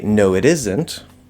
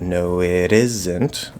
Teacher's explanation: So, isn't is stressed on the first syllable.